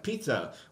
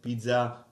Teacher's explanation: if you were to take a piece of paper uh uh and say in English Pizza you see the paper move